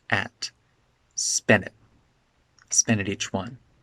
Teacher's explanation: And at becomes really de-stressed.